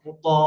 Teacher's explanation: জবরের বাম পাশে খালি আলিফ এসেছে, এক আলিফ টেনে পড়তে হবে